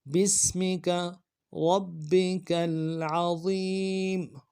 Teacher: سین کی سیٹی باریک ہوگی